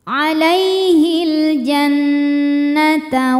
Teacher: karena Nun bertasdid maka dibacanya dengung ditahan dengungannya kurang lebih dua harakat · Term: gunah musyaddadah